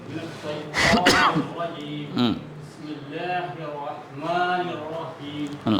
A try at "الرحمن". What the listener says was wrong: الرحمن میں تھوڑا ہا دیں زور دیں.